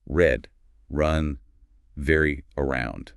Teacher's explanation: No tap, no trill against that ridge behind the teeth. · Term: English R